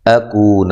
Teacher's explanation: ان حمزہ کو تحقیق سے، نون ساکن کا یہاں اظہار ہے. اکون حمزہ کو تحقیق سے پڑھنا ہے، کو واو مدہ ہے، کاف باریک ہے، نون کو لمبا نہیں کرنا.